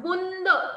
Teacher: इसका उच्चारण नाक तथा मुख की सहायता से किया जाता है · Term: चंद्रबिंदु